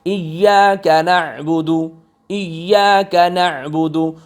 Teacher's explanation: عین گلے کے درمیان سے نکل رہا ہے